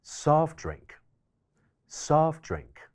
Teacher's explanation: soft▁drink▁中間嘅▁t▁省略咗之後就會變成▁soft▁drink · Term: 省音